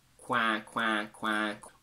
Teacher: The quackiness needs to be at the front of your nose, not at the back, otherwise you go French, As a mental image, you can think of it as coming from here, between your nose and your top lip. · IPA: /æ/